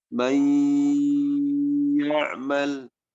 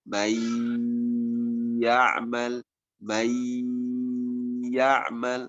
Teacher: Pastikan ada suara yang masuk ke hidung. May ya'mal, diidghamkan, kemudian didengungkan 2 harokat. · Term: gunnah